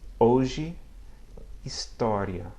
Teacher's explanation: I'm not pronouncing any audible H sound as you might hear in English